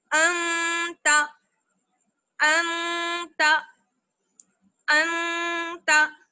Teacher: کہ قاعدہ تو یہ ہے کہ جب نون ساکن کے بعد حروف اخفا میں سے کوئی بھی ایک حرف آ جائے تب نون کی آواز کو چھپا کر پڑھیں گے اور ناک میں لے کے جائیں گے، ایک الف کے برابر ٹھہریں گے